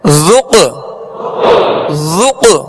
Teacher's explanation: اس میں قلقلہ ہوگا، آواز میں جنبش ہوگی اور آواز لوٹتی ہوئی آئے گی ، ذق، ذق، ذال کو نرمی سے پڑھنا ہے، ذال میں